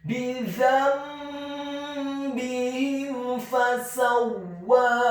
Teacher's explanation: Kata fasawwaha, huruf fa-nya dibaca fathah 1 harokat, huruf sin-nya dibaca fathah 1 harokat, huruf waw-nya dibaca fathah, tafkhim ditasydidkan, ditekankan, fathah 2 harokat karena setelahnya ada alif. Dan di akhir ayat huruf ha-nya dibaca tafkhim tebal fathah 2 harokat karena setelahnya ada alif.